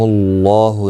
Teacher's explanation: اللہ کا لام پیش کی وجہ سے پر پڑا جائے گا، اس کے اوپر کھڑی زبر بھی ہے، ایک الف کی مقدار کے برابر کھینچ کر پڑھیں گے۔